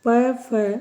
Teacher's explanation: ओष वर्ण है क्योंकि इनके उच्चारण में हमारे जीव होठों से टकराती है